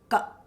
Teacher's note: So thinking as far down as we can think about our exit point for our consonants. So Ka with a little bit of air, a little bit of squeeze. Sounds like, close your eyes, ka.